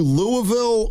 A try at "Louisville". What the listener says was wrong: Louisville. You pronounced the Ville.